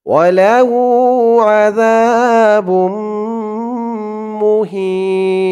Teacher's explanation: অক্ফ করার কারণে জেরের পরে ইয়া সাকিন এক আলিফ টানটা 3 আলিফ টান হয়ে গেছে।